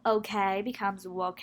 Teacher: Some Asian, Indian, English speakers may insert a glide before a vowel. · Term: epenthesis